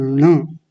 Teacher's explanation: जब ण बोलेंगे हमारी जीभ ऊपर ही जाके लगेगी, ऊपर लगाइए, एकदम जीभ को घुमा के लगाइए और बोलिए ण। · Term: णकार